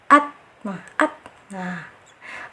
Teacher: Aslinya at, disyidahkan dulu at, karena secara aliran suaranya dia tertahan, syiddah at.